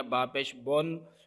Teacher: Number 1 کہ اس کو پیش کو مجہول نہیں پڑھنا، جیسے با پیش بن مکمل ہونٹ گول کر کے اگر ہونٹوں کا دائرہ کھلا رہ گیا با پیش بن تو یہ مجہول ہو جائے گا۔ اور اسی طرح اس کے اوپر مکمل غنہ نہیں کرنا، یعنی اس کو زیادہ لمبا نہیں کرنا، با پیش بن اس طرح نہیں کرنا، با پیش بن اتنا رہے۔